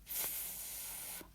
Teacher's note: f with our teeth on our bottom lip